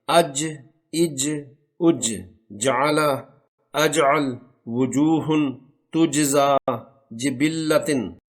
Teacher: مخرج نمبر 6، اس مخرج سے 3 حروف جیم، شین اور یا غیر مدہ ادا ہوتے ہیں۔ ان حروف کو زبان کا درمیانی حصہ تالو کے درمیان سے لگانے سے ادا کرنا ہوتا ہے۔